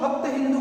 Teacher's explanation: वह स का उच्चारण हमेशा ह के रूप में करते थे